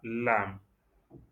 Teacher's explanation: Au départ, il y a la langue qui est placée sur le palais et ça revient vers le bas.